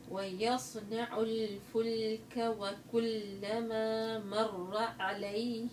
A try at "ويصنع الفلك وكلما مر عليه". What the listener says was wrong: العين سهلة. أيوة ما تشديش على العين أبدا.